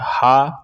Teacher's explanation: हा का उच्चारण स्थान होता है कंठ